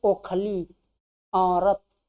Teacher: ओखली, औरत, जीभ अपने आप कहाँ चली जाती है, पीछे भाग जाती है, इसलिए ये क्या हो जाएगा, पश्च।